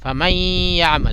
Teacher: فمن یعمل نہیں بولیں گے بلکہ ادغام ہو جائے گا اور اس کی تھوڑی سی آواز آئے گی ناک میں